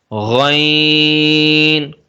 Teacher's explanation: غین اور خا کا مخرج ایک ہی حلق کے اوپر والے حصے سے، اس کو بھی پر پڑھیں گے۔